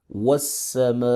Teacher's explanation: الف اور لام یہاں پہ ساکن ہے کیونکہ یہ حروف شمسیہ ہیں، تو الف اور لام کو یہاں پر پروناؤنس نہیں کریں گے، ڈائریکٹ سین کو پڑھیں گے. واو زبر سین وس، سین زبر سا، وس.